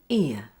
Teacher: Your jaw and lips close at the end of the schwa sound to a relaxed and neutral position with your tongue low. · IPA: /ɪə/